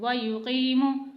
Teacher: याई मद्दा और वाव मद्दा को मैं एक हरकत के बराबर खींच रही हूँ, यानी थोड़ा सा खींच रही हूँ, जबकि ज़ेर ज़बर और पेश को बगैर खींचे पढ़ रही हूँ।